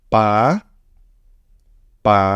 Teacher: the second tone is a from middle to high